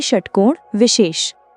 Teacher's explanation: इसके उच्चारण में जीभ को थोड़ा ऊपर उठाकर मूर्धा की ओर मोड़ते हुए हवा को घर्षण के साथ बाहर निकाला जाता है, जैसे षटकोण विशेष। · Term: मूर्धन्य